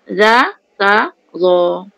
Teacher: Zo tu tebal keluar lidah kan?